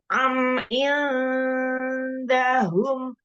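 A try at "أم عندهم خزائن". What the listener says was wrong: Jangan haza. Kha, bukan ha. Kha, kha.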